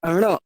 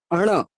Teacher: ণটা মনে রাখবেন, জিভটা তালুটাকে একবার টাচ করেই নেমে যাবে, ণ। যেন জিভটা দিয়ে একটা তালুতে টোকা মারা, ণ।